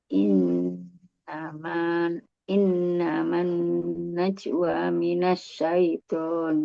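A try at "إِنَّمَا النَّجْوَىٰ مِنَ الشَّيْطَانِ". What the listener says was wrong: Wa-nya dipanjangin lagi Bu, 2 ketuk. Tadi kayaknya kurang. In naman najwa minasyaiton. najwa 2. Najwa. Jadi waknya 2 ketuk ya.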